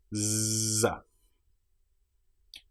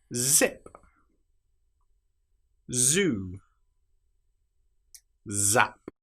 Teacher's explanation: The sound Z is voiced. It's like the sound a bee makes.